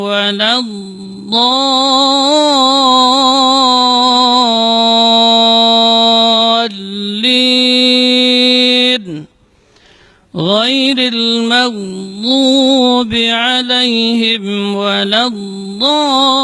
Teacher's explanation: Panjangnya 6 harakat, kemudian ada an-nabr, ada hentakannya. Setelah 6 harakat, karena dia muthaqqal, dia berat, ada tasydidnya, maka agak terangkat sedikit.